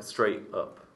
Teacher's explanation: I don't have a sound in between. I had a glottal stop at the end there.